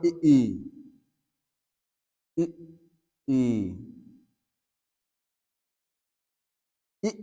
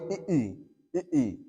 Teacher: संवृत स्वर कहलाता है। तो जिन स्वरों का उच्चारण करते समय मुख द्वार लगभग बंद रहता है